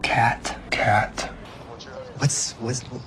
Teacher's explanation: تبدأ تقول ت وما تكملش الصوت فجأة بيختفي